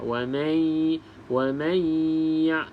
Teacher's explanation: Terus masuk, maksudnya dengung idgham tu masuk terus dalam ya